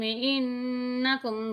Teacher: انکم پہ غنہ ہوگا، ظلمتم پہ نہیں ہوگا